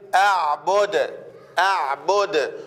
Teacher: ولما أقف عليها هقف عليها بالسكون والقلقلة تصير أعبد أعبد.